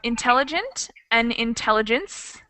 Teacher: the stress of the word is similar the stress is on the second syllable